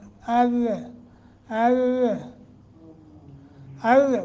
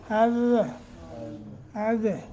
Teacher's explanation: जो जुबान है वो ऊपर आगे और काफी पे लगता है। देखिए, अज़ ज़ुबान का ये नोक वाला हिस्सा सनाया उलिया के अंदर वाले जो किनारे हैं उनके साथ लगा है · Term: दाल का मखरज